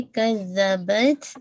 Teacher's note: कज़बत ता पे आपका हम्स भी होगा और शद्दा भी है।